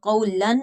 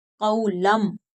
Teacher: नून साकिन के बाद बा आ गया तो हम नून को जो है वो मीम के साथ बदल कर पढ़ेंगे। मिन बादी नहीं कहेंगे, मिम। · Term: क़ल्ब